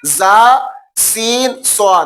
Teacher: اوپر والے دانت اور نیچے والے دانتوں کے درمیان میں جب زبان کا کنارہ لگتا ہے تو یہ حروف صفیریہ ادا ہوتے ہیں